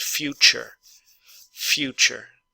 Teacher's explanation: disaster disaster expect expect expected expected future future so remember that the U when it's pronounced U almost always has a y sound in front of it so the T and the Y together actually make a CH sound